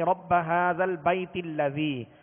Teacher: اب درمیان میں یہ حمزہ گر جائے گا اور تا کو پھر لام سے ملائیں گے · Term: حمزہ وصلی